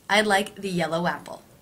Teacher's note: the word yellow ends with the o as in no diphthong and the word apple with the a vowel no breaking sound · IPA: [aɪd laɪk ði ˈyɛl oʊ‿ˈæp əl]